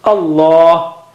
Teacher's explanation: the lam of Allah, the word Allah is thickest